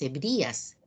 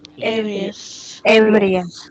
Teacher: ahí no existe, no debe existir una tilde. En ese caso, la mayor fuerza de voz está en la E.